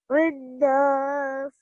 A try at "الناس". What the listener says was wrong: Okay, what you're doing here is you're quickly joining the ra and the noon.